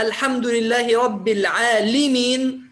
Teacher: إذا قلنا الحمد لله رب العالمين بدل العالمين فهذا لحن جلي، غيرنا حركة اللام فجعلناها كسرة بدل فتحة